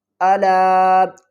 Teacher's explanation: چھوٹی مد ہے، اس کو 3 الف کی مقدار کھینچ کر پڑھیں گے